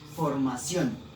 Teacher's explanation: como podemos observar, lleva el acento en la última sílaba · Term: palabras agudas